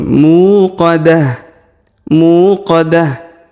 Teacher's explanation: panjangkan dua harakat karena di depannya terdapat wau sukun muqadah kemudian ta marbutah yang di ujung kita rubah menjadi ha sukun